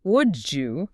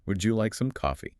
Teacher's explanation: >> Ah. >> The D and the Y crash into each other and make a J sound.